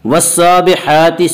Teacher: سین کے اوپر کھڑا زبر ہے، کھڑا زبر کو 1 الف کے برابر کھینچ کر پڑھیں گے